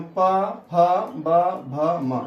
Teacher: इनके उच्चारण में ओष्ठ की सहायता ली जाती है, अर्थात आपका दोनों ओष्ठ सट जाते हैं, इसलिए इसको ओष्ठीय वर्ण कहते हैं।